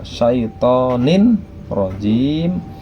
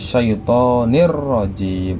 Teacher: nun kasratain bertemu dengan ro yang seharusnya dibaca syaitonin rajim berubah menjadi syaitonir rajim, ro-nya menjadi tasydid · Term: idgham bila gunnah